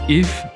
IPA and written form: əf (if)